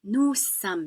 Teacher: Just like we don't pronounce the final S in nous or vous, we don't pronounce the final S in some.